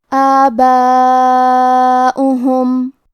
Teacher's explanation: اس مد میں ہم اپنی آواز 4 مد کے برابر لمبی کریں گے، کیونکہ واو پہ حمزہ ہے اور اس پہ پیش ہے، اور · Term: مد واجب متصل